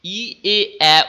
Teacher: ই এ এ উচ্চারণ করলে দেখো জিভ সামনের দিকে থাকে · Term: সম্মুখ স্বরধ্বনি